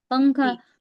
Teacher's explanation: جیسے ہم پڑھتے ہیں، جیسے زبان کی نوک کو ہم تالو سے ہٹا کر اردو میں جیسے ہم پنکھا کہتے ہیں نا، پنکھا، تو زبان ہماری نہ اوپر لگی ہوتی ہے نہ نیچے پنکھا میں، تو یہ اخفا ہوتا ہے. پنکھا، نون کی آواز کو ہم چھپا رہے ہیں نا.